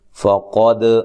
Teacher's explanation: قاف کو موٹا ادا کرنا ہے، دال پہ قلقلہ کرنا ہے، دال کو ہلانا ہے۔